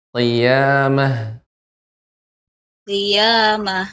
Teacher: pangkal lidah mengenai langit-langit yang lunak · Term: qof